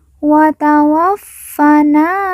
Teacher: Fa yang bertahdid kita baca ditekan dan ditahan 2 harokat. Kemudian na kita baca panjang 2 harokat karena di depannya terdapat alif yang merupakan tanda baca panjang 2 harokat.